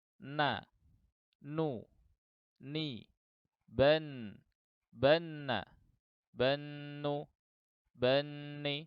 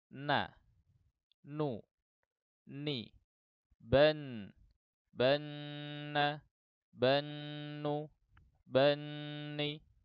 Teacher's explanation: ujung lidah bertemu dengan gusi yang sejajar sedikit di bawah makhraj lam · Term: huruf nun